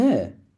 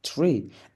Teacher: voiceless dental fricative plus R